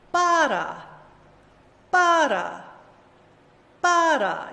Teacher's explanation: You hear the first syllable is long. That vowel is clear, right?